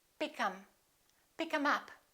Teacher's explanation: we don't say, I will pick them up. We drop this TH and we say, pick 'em.